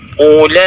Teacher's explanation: la di sini memiliki tempo bacaan atau bacaan yang panjangnya 4 sampai dengan 5 harakat. Karena ini adalah mad wajib muttasil, yaitu adanya pertemuan antara bacaan panjang dengan hamzah dalam satu kalimat.